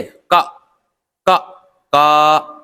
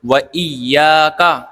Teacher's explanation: یا کھینچ رہی ہے اور کاف نہیں کھینچ رہا